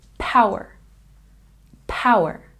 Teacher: And in outage, we have a stress on the first syllable, outage, outage. And power, we have a stress on the first syllable, and this last R sound is a bit soft.